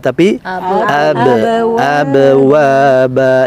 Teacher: Nah, untuk huruf ba harus dipantulkan. Jangan abwaba tapi abwaba ya.